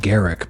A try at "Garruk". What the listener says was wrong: Garruk. you missing the U? Garruk. Garruk.